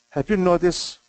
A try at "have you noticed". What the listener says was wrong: the S is too long the last one